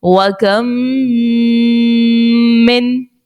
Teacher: اب اس میم کے بعد ایک اور میم اگر آ جاتی ہے تو وہاں پر ادغام شفوی کا قاعدہ لگے گا، اور ادغام شفوی میں یاد رکھیے کہ غنہ بھی کرتے ہیں